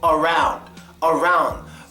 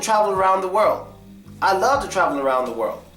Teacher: But when you're saying around after another word, when it's used in a sentence, that first A gets schwa.